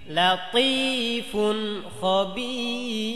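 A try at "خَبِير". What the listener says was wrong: পাতলা করতে হবে খবীর জি এমন পাতলা।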